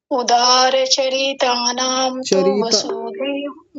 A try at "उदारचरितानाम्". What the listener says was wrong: चरिता नाम नहीं चरित नाम र पर छोटी इ की मात्रा है